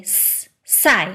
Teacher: Just more often than not, the tongue is in a slightly different spot in Mandarin. For most speakers, an S in Mandarin is pronounced with the tip of your tongue touching your lower teeth. So you make your S a little further back in your tongue.